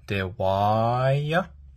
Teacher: So this is a falling tone, or what we call a downstress. So it's because it's a falling tone, your voice is going to fall. So dewaya, and this is a glottal.